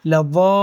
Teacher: لام کو 2 بار پڑھیں گے اور مد کو کھینچیں گے